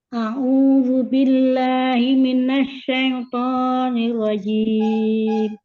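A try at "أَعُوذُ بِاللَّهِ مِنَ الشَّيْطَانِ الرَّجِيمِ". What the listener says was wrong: Afwan, Anda potong ya. A'udzu billahi la to. dua-duanya la dengan to itu sama-sama 2 harokat.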